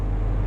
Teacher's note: बोलिए आ। जब आपने आ बोला तो जो जीभ है ना आपकी वो हल्की सी ऐसी फोल्ड हुई बीचों बीच से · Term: मध्य स्वर